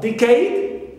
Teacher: Also decade, although it ends with a, but we stress the first syllable d and not cade, the suffix.